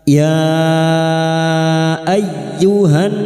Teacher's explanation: ayyu masuk pada huruf ya yang bertasdid, hanya masuk tanpa ditahan